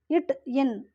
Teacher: நாவின் நுனி அன்னத்தின் நுனியை பொருந்துவதால் பிறக்கும் எழுத்து.